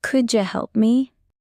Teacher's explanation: could you becomes coulda